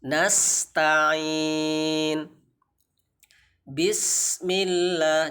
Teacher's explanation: Jadi ada pantulan dari huruf sin tersebut yang itu bukan qalqalah tapi itu adalah hams. Nasta'in, nasta'in itu huruf tipis semuanya.